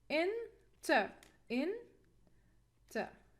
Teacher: The peak of our second syllable is the schwa sound. The schwa sound is the weakest. So, we cannot stress it. We cannot stress weak syllable. So we will stress the first syllable.